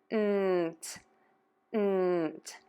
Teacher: Touch the tip of the tongue to the back of the top front teeth for that N. Air moves out of the nose, and then when you pull your tongue down, the air puffs out of your mouth for that t.